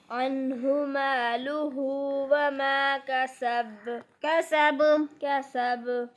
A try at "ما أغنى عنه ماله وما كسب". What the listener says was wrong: शाद नहीं है इधर, कलकला है गसब पे.